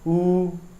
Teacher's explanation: समृत आपके ऐसे स्वर होते हैं जिनका उच्चारण करते समय लगभग आपका मुंह क्या होना चाहिए? बंद होना चाहिए।